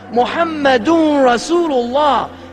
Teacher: So his name is actually assimilated into the word itself. The noon of his Muhammadun becomes the part of the Ra. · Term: idgham